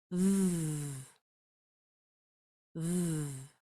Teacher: And you're using your vocal cords this time. It's the same shape for F, but you're using your vocal cords.